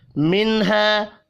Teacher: نون ساکن کے بعد ہا ہے، اظہار حلقی ہوگا، غنہ نہیں ہوگا، الف مدہ کو 1 الف کے برابر کھینچ کر پڑھیں گے۔